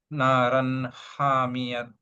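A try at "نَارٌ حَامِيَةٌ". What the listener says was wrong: نارن حامیہ. تا مربوطہ بولیں گے اس کو جب روک رہے، ہا کی آواز سے روکیں گے اس کو سکون بنا کے. نارن حامیہ.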